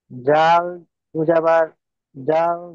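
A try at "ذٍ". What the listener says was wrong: জি, জাল দুজাবাদ দিয়ে পড়তে বলিনি, জাল দুজের দিন। দুজের জিন। জালের নিচে দুজের আছে,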